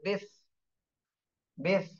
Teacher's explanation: উপরের দাঁতের আগার নিচের ঠোঁটের পেটের সাথে লাগবে